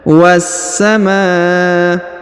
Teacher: perhatikan huruf wa langsung disambung masuk ke huruf sa yang berharokat tasdid ya. Was-samaa. Kemudian setelah itu kita langsung sambung huruf ma, kita panjangkan 5 harokat karena di atasnya terdapat tanda garis bacaan panjang 5 harokat.